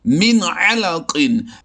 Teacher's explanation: یعنی ہم نے نون ساکن میں آواز کو چھپایا نہیں ہے بلکہ بالکل ظاہر کر کے اسے پڑھا ہے۔